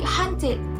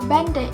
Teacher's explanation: It occurs in several allomorphs depending on its phonological environment, assimilating, pausing of the previous segment, or inserting a schwa after an alveolar stop, as ed or ed in verbs whose stem ends with the alveolar stops t or d, such as hunted.